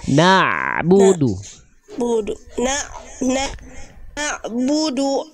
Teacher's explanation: antara na dengan Bu jangan terhenti suara Ain sukunnya